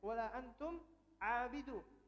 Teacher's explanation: Mim ketemu ain, dibaca izhar.